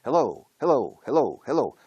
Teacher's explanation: La O final lleva todo el peso. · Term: la entonación